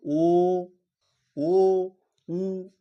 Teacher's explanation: ও বলার সময় আমাদের ঠোঁট দুটো গোল হয়ে যাচ্ছে বা কুচকে যাচ্ছে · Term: কুঞ্চিত স্বরধ্বনি